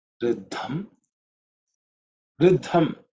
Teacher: what you need to pay attention to is that dha is aspirated, the second letter in that Riddha, compound consonant.